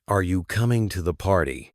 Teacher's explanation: the voice will typically rise at the end, showing it's a yes or no question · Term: Rising and falling. Intonation